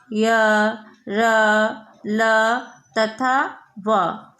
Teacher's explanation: इसके उच्चारण में जिह्वा मुख के किसी विशेष भाग को स्पर्श नहीं करती, इसीलिए इसे अंतःस्थ व्यंजन कहते हैं।